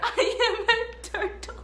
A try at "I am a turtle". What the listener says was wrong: Why you stick your tongue out at the end? You didn't just stick your tongue out. Look at me. Turtle, there's no tongue. Why did you stick your tongue out?